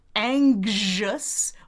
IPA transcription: ˈæŋg ʒəs